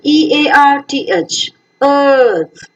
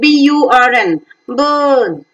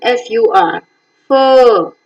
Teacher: has got the three-term label as central unrounded vowel between half open and half closed position. It's a longer one, pronounced for a longer length of time.